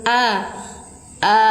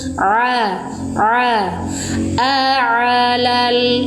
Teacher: Kalau ain ada suara mengalir.